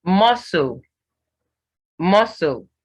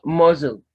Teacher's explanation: the C is silent, but the S does not change to Z